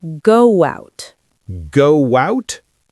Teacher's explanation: there is a ghost W there